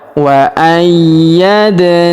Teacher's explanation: Wa ayyad. Huruf da berharakat sukun kita pantulkan atau kita qalqalahkan.